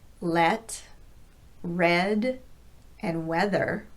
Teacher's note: The lips get slightly wider and the middle of the tongue just drops slightly from the I position to E. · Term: short E vowel